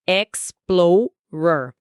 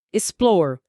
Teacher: A tônica está em plow